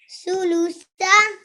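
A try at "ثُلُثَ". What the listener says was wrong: That's better. Very nice.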